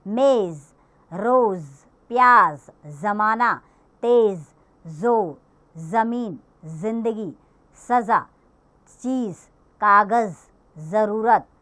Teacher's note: जैसे ही ज के नीचे नुक्ता आ जाएगा, ज मक्खी की भिनभिनाहट के साथ इसका स्वर आएगा।